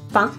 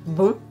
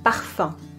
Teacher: These sounds do not exist in English and are very characteristic of French pronunciation. You need to push the air through your nose. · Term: nasal vowels